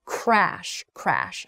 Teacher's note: Crash then has an R sound followed by an A sound, crash. So it goes from this closed R sound to an open A sound, crash, crash.